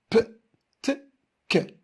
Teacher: le peu, elle est bilabiale, le te apico-alvéolaire et le que, elle est vélaire. · Ils sont tous orales et ils sont tous sourds. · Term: lieu d'articulation